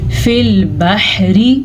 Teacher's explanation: रा को हम बारीक पढ़ेंगे रा के नीचे ज़ेर की वजह से।